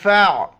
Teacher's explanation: یہ امزہ زبر ا، ذال دو زبر ذن، اذن، ذال کے وقت زبان باہر نکالنا ہے اور یا نہیں پڑھا جاتا ہے، اذن، فَاعْتَزِلُوا، فا کو عین کے ساتھ ملائیں گے، بیچ میں الف کو نہیں پڑھیں گے، عین کو گلے سے ادا کریں گے